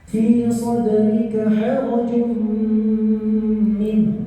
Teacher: Nah, harajum jim dengan harokat dhammatain atau dhammah tanwin menghadapi huruf min, maka idgham bi gunnah, dimasukkannya suara dhammah tanwin tadi ke huruf min, disertai dengan penahanan bunyi sampai atau guna sampai 3 harokat.